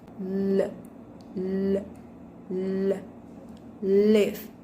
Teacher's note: With manner of articulation, lateral, and place of articulation, alveolar.